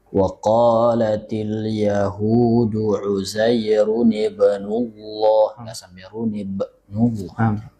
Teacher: Ketika qalqalahnya itu kegedean ya. Jadi supaya qalqalah sughra dia sekedar semacam lewat ringan saja.